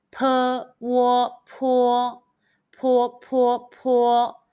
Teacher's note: Let's combine the initial P, the final Wo, and the high-pitched first tone all together.